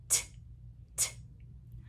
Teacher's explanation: Our voice box is off. This is an unvoiced sound. Our voice box is not on for this sound.